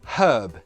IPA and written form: hɜːb (herb)